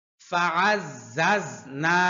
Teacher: ঝা এবং সিন একই জায়গা থেকে উচ্চারণ হয়, কিন্তু সিন পাতলা করে হবে, ঝা, ঝা শক্ত করে হয়। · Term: শক্ত হরফ